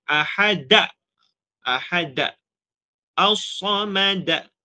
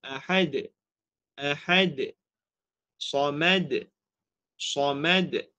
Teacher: mengakhiri suara qalqalah dengan hamzah